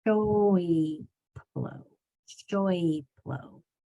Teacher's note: Make sure that you say the whole oi with your mouth moving from O to E before it makes the p sound. Your mouth is prepped and ready after the SH to make the O sound, but it's the E to the P that's going to be hard.